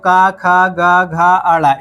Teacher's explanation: इसका उच्चारण कहाँ से होता है, तो कंठ से होता है, यानी कि यहाँ से होता है। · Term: का वर्ग